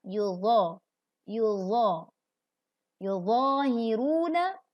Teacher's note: Dha adalah huruf tebal, maka pangkal lidah mengangkat.